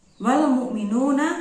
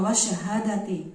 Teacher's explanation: lamnya yang pertama itu lamnya terbaca dan lam yang kedua yaitu alif lam syamsiyah itu lamnya tidak terbaca